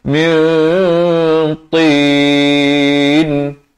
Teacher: Di sini ikhfa juga tapi dibacakan tebal. Kerana ta sifatnya sifat yang tebal.